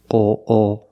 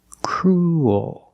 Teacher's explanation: ooh your mouth is in a more closed position crew and when you make the dark L the mouth opens a little bit